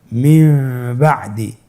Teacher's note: নুন সাকিনের পরে যদি বা আসে তাহলে নুনকে মিম দ্বারা পরিবর্তন করে পড়তে হবে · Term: ইখলাবের